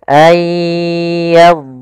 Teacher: huruf dhad ada satu sifat yang dia khusus untuk huruf dhad, yaitu sifat istitalah, memanjang dhadnya ketika dia sukun. Ayyadriba masala, dan tidak boleh memantul.